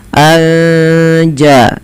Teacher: Kemudian melafal anja'ahum ada nun sukun bertemu jim, maka kita hukumi dengan bacaan ikhfa hakiki. Cara membacanya menyamarkan suara nunnya kepada huruf ja